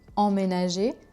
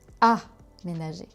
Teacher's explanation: on a emménager, voyelle nasale, emménager, et on a aussi aménager, avec la voyelle orale classique A.